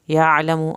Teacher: لشديد أفلا يعلم إذا بعثر. افلا الف کو لمبا کریں، یعلم عین کو حلق سے ادا کرنا ہے، میم کے پیش کو لمبا نہیں کرنا